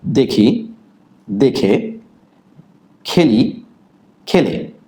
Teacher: একারের পর যদি একার অথবা ইকার থাকে তাহলে আগের যে একার এর কোনো পরিবর্তন ঘটে না।